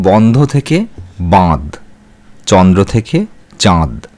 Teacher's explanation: শব্দের মধ্যে যেখানে নাসিক্য ব্যঞ্জন লোপ পেয়েছে সেখানে পূর্ববর্তী স্বরের নাসিক্যী ভবন ঘটেছে।